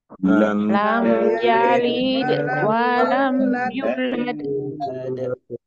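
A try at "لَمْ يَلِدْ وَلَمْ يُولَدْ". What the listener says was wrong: Ayunya panjang ya, ayunya 2 harakat. Lam yalid wa lam yulad.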